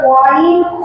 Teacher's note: মাখরাজ হলকের শেষ ভাগ হইতে